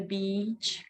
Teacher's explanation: Длинный звук И. Обязательно очень важно его тянуть. Ни в коем случае не делать его коротким, особенно в слове beach. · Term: long E sound